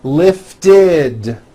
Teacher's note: word ends in a t or a D sound we add the ending ID which is a vowel I followed by a d which is voiced